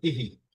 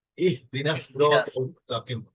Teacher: হাটা একদম গলার শেষ দিক থেকে উন্মুক্ত ভাবে উচ্চারণ করতে হবে